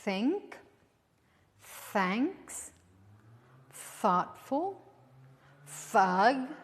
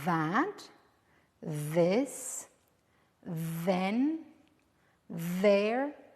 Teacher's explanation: they are pronounced in the same place one is voiceless and the other one is voiced to produce this sound you're going to bite your tongue a